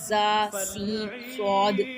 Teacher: हरूफ सफ़ीरिया ये सीटी वाले हर्फ है, जिन्हें सीटी वाले से अदा होता है ना, सीटी और सख्ती से अदा किए जाने वाले हर्फ